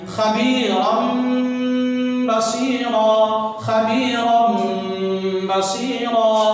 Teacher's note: لہذا یہ خبیرن, رن جو نون کی آواز اس کو ہم حذف کر دیں گے اور میم کی آواز یہاں پہ آئے گی